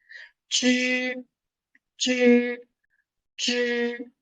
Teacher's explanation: The tongue is trying to curve back.